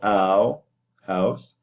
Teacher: the tongue rises in the oral cavity when you do the off glide, and there are only two off glides in English, which are the I and the O, which are shorter from the E and U compared to these. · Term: diphthongs